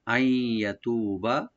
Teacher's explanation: ইয়াটাকে open রাখবেন, তু একালে টানবেন, বাতে টান নাই।